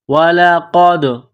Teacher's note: قاف کو موٹا کرنا ہے، قاف کو دال کے ساتھ ملانا ہے، دال ساکن ہے تو یہاں پر قلقلہ کریں گے